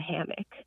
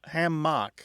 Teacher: hammock tends to have a stress on the first syllable where hamach tends to have a stress on the second syllable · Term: difference in stress